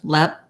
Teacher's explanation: we have the red tent vowel in that first syllable, and lep is stressed, lep, and perd is unstressed.